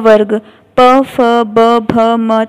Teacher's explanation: इन वर्णों का उच्चारण करते समय दोनों ओष्ठ आपस में ओष्ठ आपस में मिलते हैं, यानी कि दोनों होठ आपस में मिलते हैं उन और जिसमें होठ मिलते हैं उन्हें हम ओष्ठो कहते हैं।